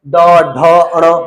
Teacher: और बाकी पीछे के एक, दो, तीन जो लास्ट तक के तीनों के तीनों बचे हुए हैं। यानी प्रत्येक वर्ग का तीसरा, चौथा, पांचवा अक्षर क्या होता है? सघोष होता है।